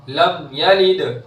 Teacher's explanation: دال کی آواز ٹکرا کر واپس آئے گی اس لیے کہ حرف قلقلہ میں سے ہے دال